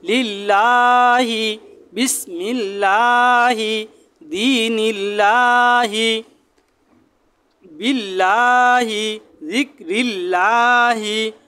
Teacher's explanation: আল্লাহ শব্দের ডানে যদি জের হয় তাহলে বারিক করে পাতলা করে পড়তে হবে